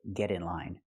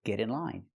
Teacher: We hear the pronunciation of T change to a fast D because it's between vowels. Not get in line, but get in line.